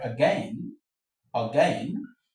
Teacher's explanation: in the word again, again, the a here is a schwa sound